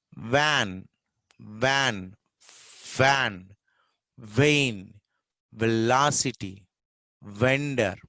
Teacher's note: Va is usually in spelling you find V. Usually, most of the V words are pronounced with the fricative va sound.